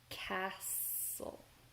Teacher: castle. We don't really hear the T.